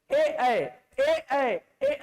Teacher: ए कंठ से लेकर तालु, इसलिए ए क्या है? कंठ तालव्य।